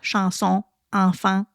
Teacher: on va entendre vraiment la sonorité nasale qui est plus particulière au Québec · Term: voyelles nasales